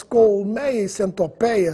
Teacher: apenas no Brasil as palavras colmeia e centopeia são pronunciadas com timbre aberto? Se você for a Portugal e escutar as palavras colmeia e centopeia com timbre fechado, não estranhe, porque eles também estão falando corretamente.